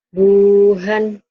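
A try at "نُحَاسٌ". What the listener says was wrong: No, bukan bu. Nuhan. Nuhan ya.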